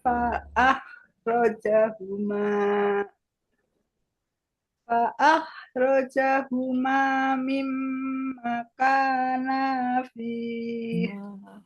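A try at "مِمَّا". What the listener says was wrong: Mimma. Ma-nya kurang panjang.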